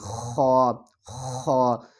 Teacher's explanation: خا کو ہم حلق کے اوپر والے حصے سے ادا کریں گے، اور جب ہم خا کو ادا کریں گے تو ہمارے جو حلق ہے اوپر والا حصہ حلق کا ہے وہاں سے آواز آئے گی خا خا۔